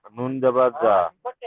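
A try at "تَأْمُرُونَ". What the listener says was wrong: আপনি নুন যাবার যা বলছেন কেন? আপনি নুন পড়ছেন, তাহলে না বলেন, নুন যাবার না। না টান দেবেন না, তা'মুরুনা, বলেন তা'মুরুনা।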